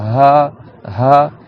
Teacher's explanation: Ha, il faut vraiment que tu ouvres toute la gorge pour qu'il n'y ait pas de frottement. C'est que de l'air qui sort.